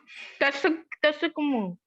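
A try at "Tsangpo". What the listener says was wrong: Not Sangamo, it's Sangpo. T is silent there. We pronounce it as Sangpo.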